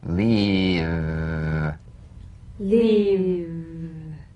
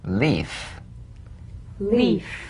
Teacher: If you don't have enough vibration in your V's, they'll end up sounding like the F because they're exactly the same. One has vocal cord vibration, the other is unvoiced.